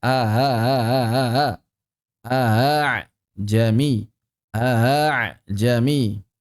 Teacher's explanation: Mencampur suara hamzah dengan alif atau mengubah hamzah yang aslinya memiliki sifat syiddah menjadi rakhawah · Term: tashil